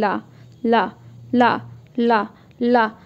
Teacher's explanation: ये जो आपकी जो वायु है वो साइड से निकल रही है, बीच में आपके हल्का सा रुकावट हो रही है